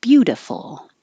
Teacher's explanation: the T changes to a d the I changes to an uh